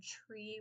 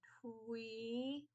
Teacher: if we were to say instead of tree, we say twee with like a W, that's gliding